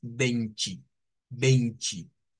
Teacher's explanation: Uno es con el sonido de una T, pero el más común en Brasil, es decir, en Brasil, es con el sonido CH. Esto suele utilizarse siempre cuando la T está acompañada de la E.